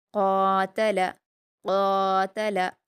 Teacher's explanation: اس کے بعد ہے قاتل قاتل، قاف کے مخرج کو آپ اچھے سے ادا کریں گے، بڑی قاف ہے اور اس پر الف مدہ ہے، 2 حرکات کھینچ کر پڑھیں گے۔ تا اور لام پر حرکت ہے اور باریک ہیں دونوں، تو ان کو باریک پڑھیں گے۔